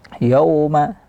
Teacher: Jadi seperti nampaknya yo, yauma, tidak ada bunyi harakat fathah yo, yang ada ya, kemudian baru dimoncongkan makhraj waw, bibir syafatain, ya baru dimoncongkan yauma